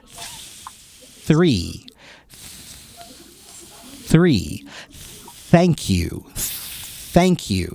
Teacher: unvoiced sound so the word three has the unvoiced sound so the unvoiced th is basically just you put your tongue between your teeth and you blow air